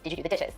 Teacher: intonation of the phrase itself in a study i found that african-american speakers may be more likely to ask a yes no question with a level tone or a falling tone